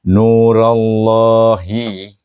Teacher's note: akan dibaca dengan tebal kerana ra berbaris alif